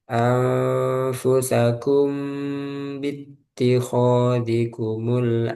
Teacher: Mimnya dengung, panjang ditahan. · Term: ikhfa, ikhfa Syafawi